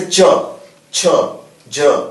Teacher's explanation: तो आप इसमें देखिए ना, इसकी वैज्ञानिकता को आप देखिए, आप जैसे च, छ, ज, तो ये हमारे तालव्य कहा जाता है, तो हमारे तालु से हमारी जीभ चिपक रहा है, उसके बाद ये हमारे व्यंजन निकल रहे हैं